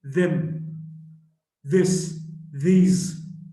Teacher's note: the voiced dental fricative